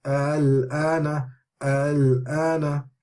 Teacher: we can hear a slight bounce in the second hamza, but it's not read very clearly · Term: tasheel